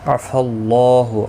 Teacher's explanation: اللہ کا لام زبر کی وجہ سے پر پڑا جائے گا، اس کے اوپر کھڑی زبر بھی ہے، ایک الف کی مقدار کے برابر کھینچ کر پڑھیں گے۔